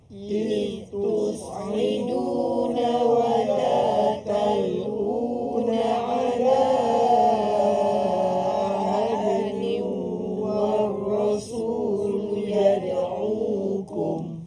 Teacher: Jadi maka zal itu dijelaskan matinya. Iz tanpa mengeluarkan nafas. Iz suara saja dilepaskan.